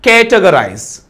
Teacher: కేటగరైజ్ first syllable పైన stress అనేది ఉంటుంది